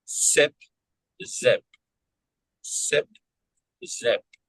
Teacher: So S unvoiced, I, the vowel is voiced, the P, that one's unvoiced, the Z, z, that is voiced.